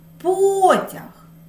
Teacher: перший склад чути голосніше це наголошений склад